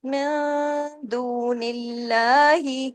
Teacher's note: اللہ کے نام سے پہلے زیر ہے. اب اس میں اللہ کے نام میں جو لام ہے اسے ہیوی نہیں کرنا، باریک کرنا ہے